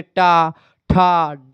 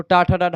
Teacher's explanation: मूर्धन्य व्यंजन कहते हैं मूर्धन्य व्यंजन की अगर बात किए तो आपके ट ठ ड आप देखते जीभ जाकर के मूर्धा से टच करती है तो टा ठ डाढ वाला पूरा वर्ग जो है मूर्धन्य आ